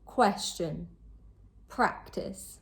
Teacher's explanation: The stress is placed on the first syllable. These can both be verbs or nouns, but in both cases, the stress is always placed on the first syllable.